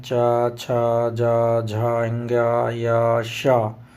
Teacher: तालव्य से हैं, तालु से जो बोले जाते हैं